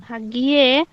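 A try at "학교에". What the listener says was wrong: আবার ইয়ে হলো কেন? ভেঙে ভেঙে পড়েন। হাক গিও এ হাগিও এ।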